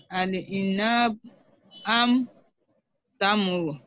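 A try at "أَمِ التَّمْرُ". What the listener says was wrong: Amit tamra. Join kasra with shadda. Amit tamra.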